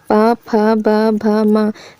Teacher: इसमें दोनों होंठ आपस में लगते हैं। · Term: ओष्ठ